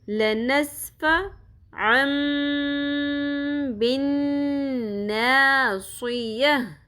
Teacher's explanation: تنوین کے بعد حرف با آ رہا ہے، اس وجہ سے یہ ساؤنڈ میم میں بدل جاتی ہے. اس کو اقلاب کہتے ہیں.